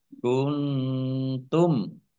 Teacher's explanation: Ya Sukun Madi mim fathah Alif Madi panjang dua harakat kuntum nun sukun bertemu dengan huruf ta bacaan Ikhfa di baca samar-samar · Kuntum nun sukun bertemu dengan huruf ta bacaan ikhfa dibaca samar-samar. Mim sukun bertemu dengan huruf fa bacaan izhar syafawi dibaca jelas.